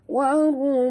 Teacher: dengung pada mim yang bersabdu wajibal gunnah